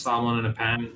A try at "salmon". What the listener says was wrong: You don't need to pronounce the L, by the way. The L. Unless that is a proper way of pronouncing it. it's just salmon.